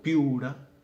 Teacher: se unen las vocales I, U, pero se unen en una sola sílaba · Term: diptongo